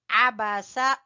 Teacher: عین کو آپ نے وسط حلق سے نکالنا ہے